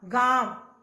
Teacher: अनुनासिक, बोलते समय हवा नाक और मुंह दोनों से निकलती है।